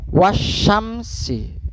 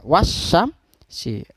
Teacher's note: asy-syamsiyah alnya tidak dibaca jelas tetapi langsung dileburkan ke dalam huruf selanjutnya